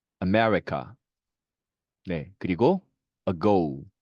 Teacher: 슈아 발음은 특이하게 우리말의 어 발음과 굉장히 유사합니다.